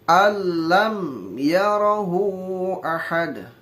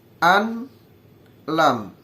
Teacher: nggak harus ditahan atau nggak pakai dengung, nggak pakai gunah, liwatkan saja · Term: idgham bila gunah